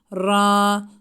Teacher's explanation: ra harekesi üstün olduğu için kalın okunur